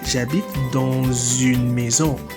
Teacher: I pronounce the last consonant because the first letter of the word that follows is a vowel. That is une, it starts with the vowel U. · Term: liaison